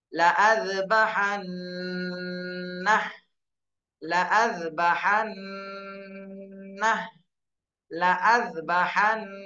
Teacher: হরকতের বামে নুনে তাসদীদ, এখানে ওয়াজিব গুন্না করতে হবে।